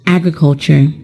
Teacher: The word agriculture is a noun, and it is stressed on the first syllable.